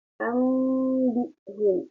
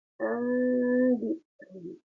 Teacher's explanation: Jadi apabila nun sukun atau tanwin bertemu dengan ba, kemudian cara baca ba-nya diganti kepada huruf mim. Jadi nunnya dimasukkan ke huruf ba, kemudian diganti seperti keluar huruf mim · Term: iklab